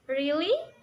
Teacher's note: To sound excited, you start and finish higher. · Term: rising falling tone